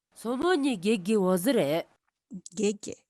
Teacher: the first syllable gege is low and slightly rising ge, and the second syllable is lower than the first syllable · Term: low falling pattern